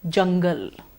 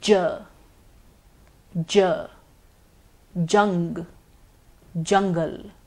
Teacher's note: We would notice vibration in the vocal cords. J is a voiced sound. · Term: j sound